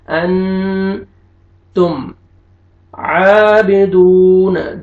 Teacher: واو مدہ، واو سکون سے پہلے ضمہ، دال کو آپ نے کھینچنا ہے